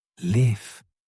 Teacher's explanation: The short I live is a lazy sound. Your mouth should be relaxed. Your jaw drops a little.